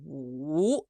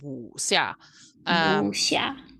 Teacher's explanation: So the symbol for a third tone is like an upside down chevron. So it starts up high, goes down low, and goes back up like a V.